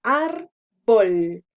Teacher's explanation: La mayor fuerza de voz es en ar, que sería la penúltima, y como no termina en N, entonces la tildamos.